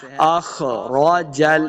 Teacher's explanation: خا کو موٹا پڑھنا ہے، خا حروف مستعلیہ سے ہے